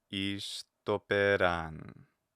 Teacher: I don't have to raise the accent on the pe. I don't have to go up there.